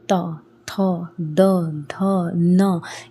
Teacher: आपकी जीभ आपके कौन से भाग को टच कर रही है? आपके दांत को कर रही है ना? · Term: दंत्य वर्ग